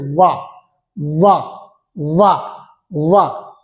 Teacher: दांत और ओठ को सटा के बोला जाता है। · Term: दंतोष्